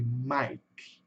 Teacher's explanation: Esse K fica pela metade, né? Ele fica preso na garganta. Fica ali, Mike.